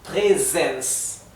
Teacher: La letra S en alemán, cuando se encuentra entre dos vocales, como es el caso aquí, y no se encuentra duplicada, o sea, no tenemos una doble S, tenemos solo una S, se ha de pronunciar Z. Por eso aquí en verde lo coloqué con Z, para que sepan que se ha de pronunciar vibrado.